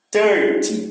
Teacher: E em 30, o que é mais forte já é o começo